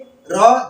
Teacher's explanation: प्रकंपित व्यंजन। प्रकंपित का मतलब आप जब र का उच्चारण करते हैं जीभ कांप उठती है। र बोलिए, र देखेंगे जीभ कांप उठते हैं, तो इसलिए इसको प्रकंपित व्यंजन।